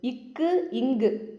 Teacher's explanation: இக்கு, இங்கு அப்படின்னா நாவோட முதல் நுனி அன்னத்தின் அடி, நம்ம நாக்கோட ஸ்டார்டிங் உள்ளே இருக்கு இல்லைங்களா, அதுதான் இக்கு இங்கு அப்படின்னு சொல்லும்போது இந்த நாக்கும் அன்னமும் மோதும். நாக்கோட முதலும் அன்னத்தோட அடியும் மேலே இருக்கு இல்லைங்களா, அன்னம், அந்த அன்னத்தோட அடியும் மோதும்.